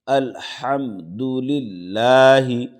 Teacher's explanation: الحم، دال پیش دو، الحمد، لام لام زیر لل، لام کھڑا زبر لا، لفظ اللہ ہے اور لفظ اللہ سے پہلے زیر ہے تو لفظ اللہ کے لام کو باریک پڑھیں گے۔